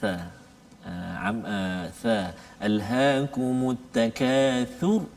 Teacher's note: Huruf yang kita nak kongsikan pada hari ini iaitulah huruf tha, di mana tempat keluar makhraj huruf tha ni iaitulah makhraj lidah ataupun al-lisan, iaitu hujung lidah bertentangan dengan hujung dua gigi kaci tengah dia